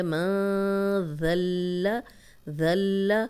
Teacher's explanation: فی الارض من ذا الذی، نون ساکن آ گیا، نون ساکن کے بعد آگے ذال ہے تو یہاں پہ ہم غنہ کریں گے، اور ذال کو لام سے ملائیں گے، ذال کی زبر لام سے ملے گی کیونکہ لام پہ شد ہے